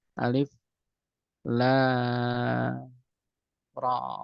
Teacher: Tidak bisa ra panjang, ra 2 harokat saja. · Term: mad tabi'i